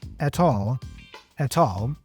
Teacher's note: notice that he pronounces the T here for at as a true T